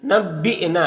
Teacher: یہاں پر حمزہ ساکنہ ہے، جھٹکا لگے گا